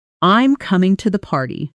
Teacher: Notice the pitch drops on party. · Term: falling